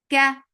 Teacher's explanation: For Fatha open jaws, A, Ka, Kaf is light. For fatha open jaws, the sound is short.